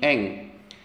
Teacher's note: holako terdapat nun mati bertemu dengan huruf SIM hukumnya adalah ikhfa bunyi ikhfa itu adalah dengung seolah-olah berbunyi Eng